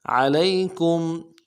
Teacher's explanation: لام کو یا کے ساتھ ملائیں گے، یا لین بغیر کھینچے پڑیں گے